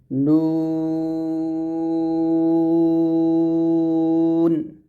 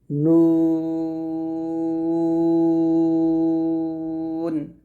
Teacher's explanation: গোল করে নুনটা উচ্চারণ করতে হবে আর মাখরাজটা হচ্ছে যেহেব্বার আগাটা জিহিব্বার আগা তার বরাবর উপরের তালুর সঙ্গে তালুটা লাগবে তালু তালু মানে হচ্ছে আপনার জিহিব্বার উপরের যে অংশটা আছে ওইটাকে